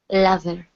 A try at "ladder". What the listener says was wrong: So here you're saying ladder, pronouncing a Spanish D sound. When we pronounce the D in English, it feels like a Spanish R. Like if you were to say the word Maria. Okay, D, ladder, ladder. So in English, the D, when you pronounce that, it cannot touch your teeth.